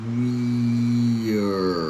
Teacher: Then because we have an R sound, there's a little transition from E to R. So we add a little schwa sound. A very relaxed sound to go from E to R.